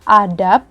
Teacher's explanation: terdengar seperti bunyi P tertutup karena tidak membutuhkan dengungan